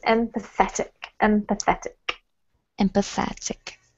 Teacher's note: the emphasis is on the et, so it's empathetic